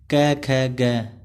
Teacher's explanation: जीवा मूल्य, जिसमें जीवा के मूल स्पर्श होता है